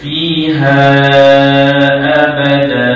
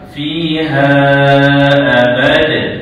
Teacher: Ha kita nak berhenti bacaan sebelum tu ada huruf yang dua baris di atas maka kita jadikan dia dua harakat gantikan dia dengan alif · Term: mad iwan